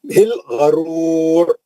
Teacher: دونوں را موٹے پڑھیں گے, روکیں گے, ہے نا, غرور مد عارض کر کے روکیں گے.